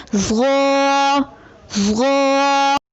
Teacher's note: زبان کی نوک کو سامنے والے اوپر کے دو دانتوں کے اندرونی کناروں سے نرمی سے لگا کر اور زبان کے پچھلے حصے کو تالو کی طرف بلند کرتے ہوئے موٹی آواز میں پڑھیں، یعنی ظا۔ آئیے مشق کیجیے۔